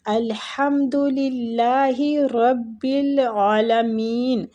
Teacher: الحمد ہا جو ہے وہ وسط الحلق سے، الحمد للہ، اللہ کی لام کو ادھر ہم باریک پڑھیں گے، للہ رب العالمین، را کو زبر کی وجہ سے پور پڑھیں گے، عالمین عین پہ کھڑی مد ہے تو ہم عین کو ایک الف کھینچیں گے